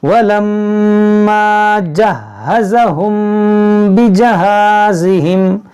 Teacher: میم ساکن کے بعد با ہے تو یہاں پر غنہ کریں گے, اخفاء شفوی کریں گے